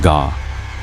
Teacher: The ga sound, known as a velar plosive, is made at the back of the mouth